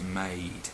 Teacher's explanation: the word made, which has got AI in there, it uses the EI diphthong, not the AI